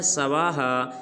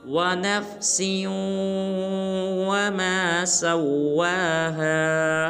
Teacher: اس حرف کو بعض مسلمان پڑھ دیتے ہیں سواہا، یہ بالکل غلط ہے۔ سین کو واو مشدد کے ساتھ ملائیں گے، واو کے اوپر کھڑا زبر ہے، واو کو ایک کلمہ مقدار لمبا کریں گے اور پڑھیں گے سواہا، مکمل ہے، توجہ کے ساتھ سنیے، وَنَفْسٍ وَمَا سَوَّاهَا۔